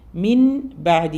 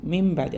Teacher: പറയും കാരണം ശരിക്കും വരുന്ന വരുന്ന സൗണ്ട് മിൻ ബാദി എന്നാണ് മിൻബ പക്ഷേ നമ്മൾ അവിടെ കൊടുക്കുന്നത് നൂനിന്റെ സൗണ്ട് മാറിയിട്ട് മീമിന്റെ സൗണ്ടിലേക്കാണ് പോകുന്നത് ബയിലേക്ക് നമ്മൾ അത് മേർജ് ചെയ്യുമ്പോൾ ലയിപ്പിക്കുമ്പോൾ ആ സൗണ്ട് മാറി ബാ പിന്നെ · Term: ഇഖ്ലാബ്